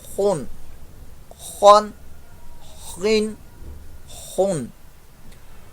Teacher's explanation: خوا جو ہے وہ ٹاپ پارٹ آف تھروٹ یعنی کہ حلق کے اوپر والے حصے سے